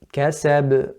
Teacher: If you compare it to kasab, the qalqala on the ba is greater. You can hear it, it's louder.